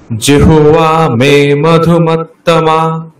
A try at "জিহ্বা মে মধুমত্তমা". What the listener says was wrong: হ্যাঁ, জিহ্বা আকারটাকে আরেকটু টানতে হবে।